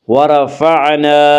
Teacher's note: الف مدہ کو ایک الف کے برابر کھینچ کر پڑھیں گے۔